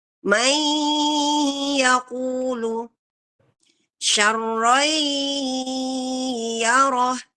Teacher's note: yang sekarang kita baca ini adalah dari hidung, bukan dari tenggorokan.